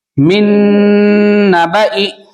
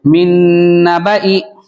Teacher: نون ساکن کے بعد نون آ رہا اس لیے ادغام نون ہوگا